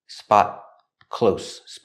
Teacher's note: The T in spot is a stop T.